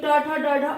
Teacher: हमारी जो ये जीवा है ये मूर्धा पे जा रही है, मतलब छत को छू रही है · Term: मूर्धन्य